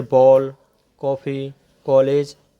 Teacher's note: आ तथा ओ के बीच की ध्वनि ओ को आगत स्वर या विदेशी स्वर कहते हैं। इसका प्रयोग केवल अंग्रेजी भाषा के शब्दों में किया जाता है, जैसे बॉल, कॉफ़ी, कॉलेज आदि।